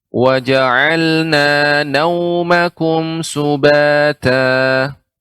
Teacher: ketika nau di sini waw sukun sehingga kita munyungkan bibir kita